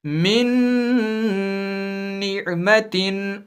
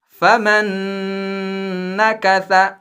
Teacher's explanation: پہلے نون کی آواز کو دوسرے والے نون یعنی حروف یرملون والے نون میں ایسے داخل کر کے پڑھیں گے کہ لگے گا صرف ایک ہی نون پڑھ رہے ہیں